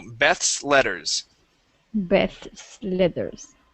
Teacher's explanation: we have the uh the th leading into the S and then an L okay so this is tricky okay so Beth's letters Beth's letters